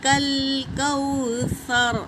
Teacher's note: جب سا پڑھیں گے تو دونوں دانتوں کے بیچ میں زبان کی ٹپس ڈال کر سا ادا کریں گے